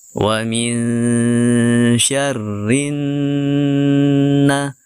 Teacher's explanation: lam asyamsiyah sehingga lamnya tidak dibaca langsung tasdidkan ke huruf nun dengan menekan dan juga mendengungkan ya serta menahan bacaan dengung di huruf nun yang bertasdid ini